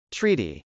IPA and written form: trˈiːti (treaty)